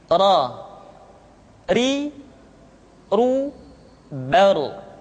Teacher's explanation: huruf ra diucapkan dengan menyentuhkan punggung lidah dengan langit-langit